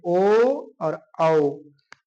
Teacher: हम जब लोग ओ और औ बोलते हैं तो ये इसका क्या है, तो इसका है कंठ ओष्ठ। क्या है, कंठ और ओठों को मिला के बोलते हैं ओ और औ